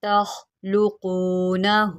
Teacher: اَأَنتُمْ تَخْلُقُونَهُ یہاں پر خا کو موٹا کریں، یہ حروف مستعلیہ میں سے ہے۔ تخلقونہ، قاف جو ہے اس کو بھی ہم موٹا کر کے پڑھتے ہیں کیونکہ یہ حروف مستعلیہ میں سے ہے